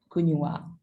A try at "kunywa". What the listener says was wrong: kunywa. Like it's a 2 2 syllable. Ku and nywa. Yeah, nywa. If you say kunywa, means you have put 3 syllables there.